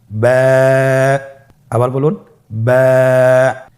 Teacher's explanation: বা হরফে টান হবে। এক আলিফ টান।